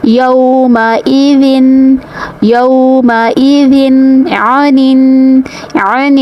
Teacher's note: ذال کو نرمی سے ادا کرنا ہے اور تنوین کو ظاہر کرنا ہے کیونکہ آگے ہے حروف حلقی میں سے عین، تو یہاں پر اظہار حلقی کا قاعدہ ہوگا۔